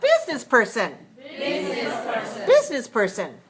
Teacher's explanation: that's four syllables and the stress still on the first syllable